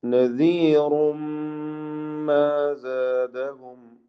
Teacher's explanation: നദീറുൻ റാ നേരത്തെ വന്ന അതേ പദം തന്നെ തഫ്ഖീം ചെയ്ത് റാഇനെ ഉച്ചരിക്കുക. റാഇന്റെ തൻവീനിനെ ശേഷമുള്ള മീമിൽ പൂർണ്ണമായും ലയിപ്പിച്ച് മണിച്ചുകൊണ്ട് ഉച്ചരിക്കണം. ഇത് ഗുന്ന കാമിൽ.